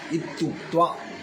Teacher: ह्रस्व ई यो में बदल जाता है, अपने से भिन्न स्वर है।